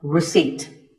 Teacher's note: The P is silent